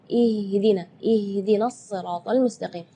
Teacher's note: Sedangkan makhraj huruf H itu adalah dari tenggorokan. Jadi keluarnya tipis karena H itu termasuk huruf di antara 28 huruf hijaiyah yang paling lemah adalah huruf H.